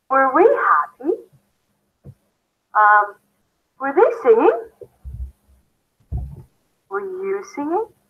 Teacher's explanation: at the end of the question in English, it's a rising intonation